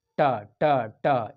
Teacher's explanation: टवर्ग, टवर्ग जो है वो मूर्धा है। ट ट ट, ये जीभ जो है वो आपको मूर्धा पर ऊपर टच करेगा।